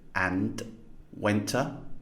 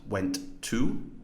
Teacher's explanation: That final t sound in went is being elided.